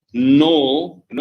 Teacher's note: n is alveolar as well as nasal sound when you say no no like and that's how you know